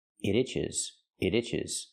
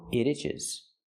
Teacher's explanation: When I link the sounds and say it together, it itches, it itches. You hear the T in it pronounced as a fast D.